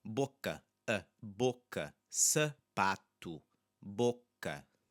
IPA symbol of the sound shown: ɐ